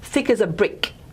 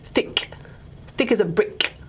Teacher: that was an ejective at the end. Okay, so it tends to happen in quite emphatic.